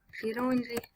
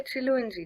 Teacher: it does sound more like an R if an E or an I comes before the L, then it turns into an R.